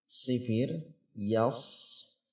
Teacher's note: Itu huruf sad itu sifir. Seperti huruf sin tetapi dibuat bulatan kecil menyamping sehingga terdengar suara semacam siulan kecil.